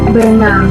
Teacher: maka bunyi er yang ada pada awalan ber dilesapkan